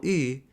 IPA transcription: ɨ